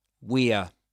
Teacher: when it's the contraction, it's a schwa only.